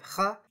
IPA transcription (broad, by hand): x